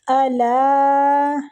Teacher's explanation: الا کی جو مد ہے نا، اس مد کو ہم نے 3 سے 4 الف کھینچ کے کرنا، یہ مد بھی مد جائز منفصل ہے، ٹھیک ہے؟